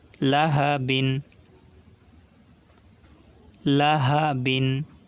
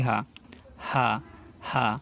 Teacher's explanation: এই হা কিন্তু আমরা কণ্ঠনালীর মাঝখান থেকে উচ্চারণ করব না, এটা কিন্তু স্বাভাবিকভাবে বলবো। কণ্ঠনালীর শুরু থেকে উচ্চারিত হয় এই হা হা হা।